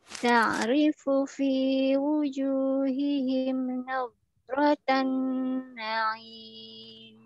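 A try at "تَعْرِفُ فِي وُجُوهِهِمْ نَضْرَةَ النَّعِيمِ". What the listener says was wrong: Panjangan lagi. Rotan. Tahan aja. Rotan. Na'im.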